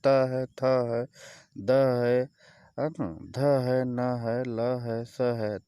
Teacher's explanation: ये दांतों के स्पर्श से बोले जाते हैं। जब जिह्वा जो है हमारी दांतों को छूती है तब ये सब शब्द निकल पाते हैं